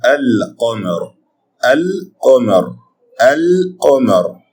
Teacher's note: you pronounce the lam out and clearly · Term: al-lam al-qamariyah